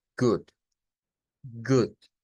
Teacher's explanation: la doble o que está acá en el caso de esta palabra es una u es decir una u corta del inglés